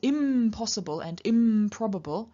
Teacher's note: with the N changing to the labial nasal M, in front of the labial stop p. So it's not impossible, but impossible.